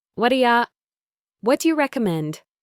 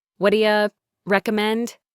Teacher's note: The do becomes a d sound and u becomes y. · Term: reduction